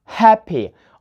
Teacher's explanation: we put the stress on the first syllable, happy. Or nice, it's nice.